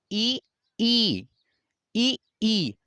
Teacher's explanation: अगर आप बोलेंगे ई, ई, ई, तो जीभ जो है वो ऊपर सट रही है, तो इसे बोलेंगे तालु, इसका उच्चारण स्थान तालु हो गया।